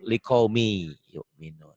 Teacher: Bisa dikatakan idgham itu tulisan dan bacaan beda. Ditulisnya ada bunyi N-nya, dibacanya N-nya hilang, melebur.